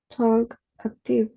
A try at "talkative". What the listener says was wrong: talkative. You don't mention the letter L. No, talkative.